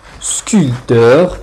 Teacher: dans le mot sculpter, il y a le P, mais on ne le prononce pas.